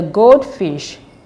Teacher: The first word here is gold, and the second word is fish. The stress should be on the first word, which is gold.